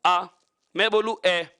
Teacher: शुरू से अंत तक ए की ही ध्वनि आ रही है